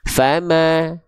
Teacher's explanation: Fama, tipiskan huruf fa, tipiskan huruf mim karena dia ketika berharokat fathah vokalnya vokal a yang keluar.